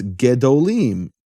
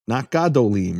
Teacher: the kamatz of Yah, that's the name of the vowel there, kamatz, changes to shva when the word is elongated